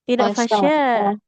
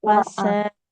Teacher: Huruf sin. Nah, jangan jadi sya. Tidak fasya. Fasa. Kayak S biasa Ibu ya.